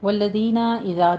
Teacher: دونوں جگہ زال نرمی سے پڑھنا ہے، سیٹی کی آواز نہیں آنا چاہیے